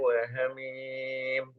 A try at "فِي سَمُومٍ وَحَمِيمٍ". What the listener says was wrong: Fi-nya panjang. Bantu Fi. Fi.